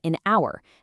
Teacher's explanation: That h is totally silent. So the word starts with a vowel sound.